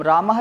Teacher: विसर्ग, जैसे कि हम रामः लिखते हैं तो आगे विसर्ग लगाते हैं, तो उसका उच्चारण स्थान भी कंठ होता है